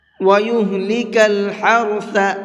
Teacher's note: ہا کو حلق سے نکال کر کے پڑھیں گے، اور ثا کو نرمی کے ساتھ میں پڑھیں گے، سافٹ کر کے پڑھیں گے۔